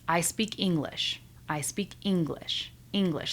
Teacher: see how it goes down at the end? That is showing certainty. I am simply stating a fact. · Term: intonation